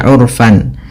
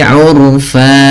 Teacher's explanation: kita baca dengan bacaan mad iwad, yaitu mengganti fathatain menjadi panjang